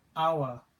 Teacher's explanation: But if you listen to how I'm saying it, I'm saying hour. I'm not pronouncing that H, hour. So that hour, that begins with a vowel sound.